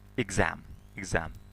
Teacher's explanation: Mana am, mana bu a ga urg'uli bo'g'in hisoblanadi. Urg'uli bo'g'indan oldin gz tarzida o'qiladi.